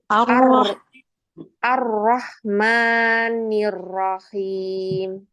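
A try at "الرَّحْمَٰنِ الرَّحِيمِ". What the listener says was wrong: Ya ini PR nih ya, ro. Ro-nya PR.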